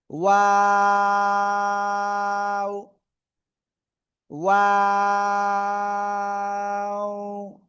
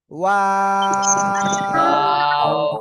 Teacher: এই যে দুই ঠোঁট শুরুতে গোল হবে, মাঝখানে দুই দিকে প্রসারিত হবে, শেষে এসে আবার গোল হবে, ঠিক আছে। এবং এই অক্ষরে 3 আলিফটা নিয়ে উচ্চারণ করব।